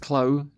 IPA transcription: kləʊ